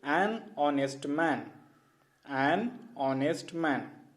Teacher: Because H in honest is silent. The word begins with the vowel sound O.